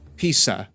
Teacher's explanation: A Z is always TS, like in pizza